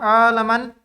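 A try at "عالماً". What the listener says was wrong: Salah harokat. Aliman.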